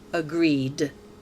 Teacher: The ed is pronounced d because agree ends with a voiced sound.